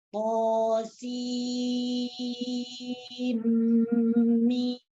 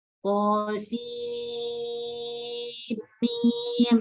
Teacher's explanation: setelah memanjangkan sin ini kemudian dimasukkan, diidghamkan ke dalam huruf mim dan didengungkan. Jadi cara membacanya qasim mim.